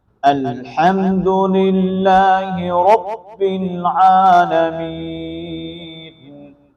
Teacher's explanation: الحمد میں لفظ ہا کو ہم نے بریک کرنا ہے، موٹا ہا نہیں کرنا، جو ہا کی بریک کی ادائیگی ہے وہ ہوگی، اور اس کے بعد لفظ اللہ کا نام بریک ہوگا ما قبل کسرے کی وجہ سے